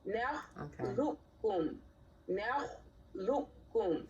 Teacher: the qaf is going to be assimilated into the kaf. The qaf is going to be assimilated into the kaf by way of the shadda.